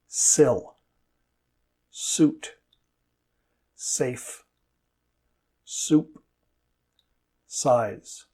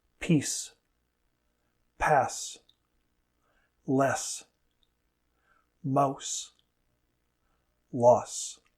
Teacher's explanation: The sides of the tongue touch the insides of the teeth on the sides of the mouth. The sound is made when air is forced through the small gap between the teeth and the tongue.